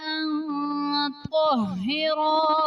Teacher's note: نون ساکن کے بعد حروف اخفا میں سے طا آ رہا ہے، تو یہاں پر اخفا کا قاعدہ ہوگا، یعنی نون ساکن میں ہم غنہ کر کے پڑھیں گے